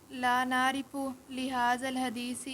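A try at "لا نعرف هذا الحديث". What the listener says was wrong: لا نعرف آپ نے لام کدھر سے لے آئے ہیں؟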